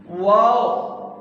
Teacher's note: واو ہونٹوں کو گول کر کے پڑھیں گے